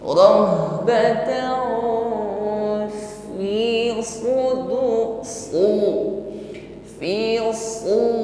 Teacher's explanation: Rahbatan, tanwin bertemu fa, ikhfa. Mengucapkan tanwin masuk pada makhraj fa, pertemukan ujung gigi dengan bibir bawah.